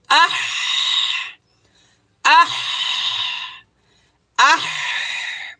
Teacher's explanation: হলকের মধ্যখান হইতে উচ্চারিত, মানে গলার মধ্যখান, হলক মানে কি গলা, গলার মাঝখান।